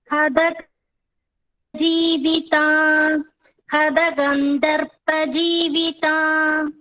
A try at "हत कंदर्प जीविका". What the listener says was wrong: जीविका it's not taka ka जीविका hata it's not gandharpa it is kandarpa